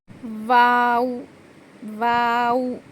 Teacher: दोनों होठों को गोल करने से और ना मिलने से वाव अदा होता है वाव कैसा आधा होगा दोनों होर गोल करेंगे ठीक है ओ